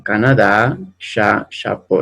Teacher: en francés la fuerza de voz, ¿no? El acento siempre va a estar en la última sílaba.